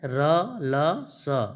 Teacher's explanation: ये जो 3 वर्ण हैं र, ल, स, इनको वर्त्स व्यंजन कहते हैं।